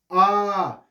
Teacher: आ हलक में जा रहा है यानी पीछे के भाग से बोला जा रहा है